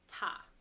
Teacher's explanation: literally pronounced the same and the pinion is the same it's ta with a high flat tone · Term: first tone